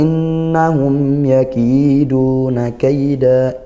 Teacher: Dibaca jelas mim sukunnya karena bertemu huruf ya. Bukan huruf mim bukan huruf ba. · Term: Izhar syafawi